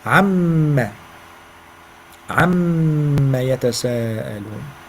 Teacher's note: The ayn. From the middle of your throat.